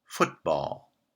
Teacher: the first word is the strong member and therefore stress for the compound is placed on foot